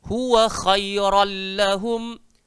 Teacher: Dia kena masuk. Ron tu N takkan bunyi, dia akan jadi L.